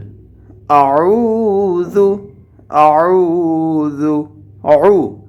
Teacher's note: আইন হরফটিকে আমরা উচ্চারণ করব কণ্ঠনালীর মাঝখান থেকে ঠিক মাঝখান থেকে উচ্চারণ করতে হবে